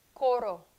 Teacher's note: when the r is located in the middle of a word like the word for choir choro like a softer d sound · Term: single r